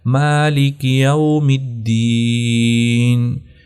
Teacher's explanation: میم کے اوپر بھی کھڑا زبر ہے تو اس کو بھی لمبا کرنا ہوتا ہے